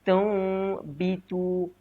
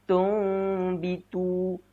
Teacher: Kita menukarkan huruf nun kepada mim. Berserta dengan dengung. Tumbitu. Dia ada renggang sedikit pada bibir kita. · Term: iqlab